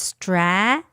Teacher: the first A where the stress is, it's a long A vowel sound. So it's stra.